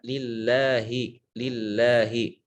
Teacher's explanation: huruf lam ya harus dibaca tipis